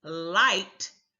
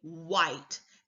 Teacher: no tongue movement has been activated but what they've done is they won't move their tongue but they're bringing their lips forward in an attempt to make the L sound